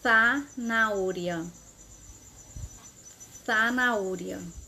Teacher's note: Essas palavras que eu estou pronunciando é na Espanha, que é com a ponta da língua entre os dentes.